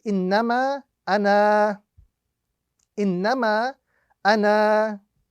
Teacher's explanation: If we are reciting and we are continuing with our recitation, that alif must not be pronounced. If we are stopping on that particular word, then only the alif would be pronounced.